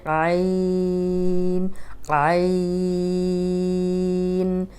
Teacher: عین لمبا کریں گے، ان میں چھوٹی سی نون کی آواز آئے گی، اس کو بھی ناک میں نہیں لے کے جائیں گے